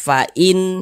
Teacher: tentang hukum tajwid huruf hamzah termasuk salah satu huruf izhar halqi karena dia izhar maka dibaca jelas tidak berdengung tidak ada ghunahnya